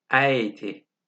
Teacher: Ä harfini söylerken dudakların şekli A harfini söylerkenki gibi ve ağzın açıklığı da A harfini söylerkenki kadar. Ama Ä sesi I ve E harflerinin söylendiği yerden, dişlerin hemen arkasından söyleniyor.